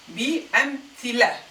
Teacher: I ignored the feminine marker and pronounced just the lam with its فتحة.